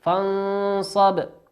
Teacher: فانصب نون ساكنة أتى بعدها حرف الصاد، والصاد من حروف الإخفاء فتخفى النون